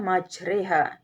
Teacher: bacaan ini berarti membaca fathah yang condong ke kasrah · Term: imalah